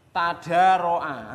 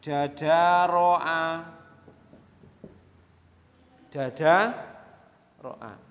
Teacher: Karena berdekatan makhraj ini sering dirubah. Taknya ini dirubah menjadi apa? Menjadi dal. Menjadi dadaro'a.